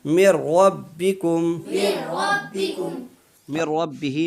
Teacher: من ربہ میں نون ساکین کے بعد را آ گئی، اس لیے یہاں پر ادغام ہوگا